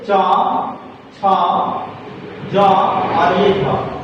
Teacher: जैसे इन वर्णों के उच्चारण में पहले क्या होता है कि मुख के जो अवयव होते हैं, जैसे दांत हो गया, ठीक है, जीभ हो गया, तालु हो गया, तो ये आपस में क्या करते हैं, पहले स्पर्श करते हैं और स्पर्श करने के बाद जो हवा जो होता है, हवा जो है संघर्ष करते हुए बाहर की ओर निकलती है, इसे स्पर्श संघर्षी व्यंजन वर्ण कहा जाता है।